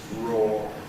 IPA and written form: ɹɔː (raw)